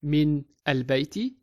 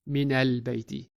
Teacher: originally the heart of mean has sukun over the noon but just to help us out to smoothly connect the two words when pronouncing it the noon gets a fatha before al